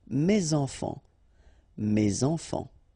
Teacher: Enfant, children is starting with a vowel, so you should make the liaison, mes enfants, mes enfants.